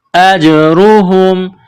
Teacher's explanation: جیم ساکن ہے تو یہاں پر قلقلہ کریں گے